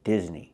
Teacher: I cannot use the long E sound like green beans, Disney. I need the short I sound like this is, Disney.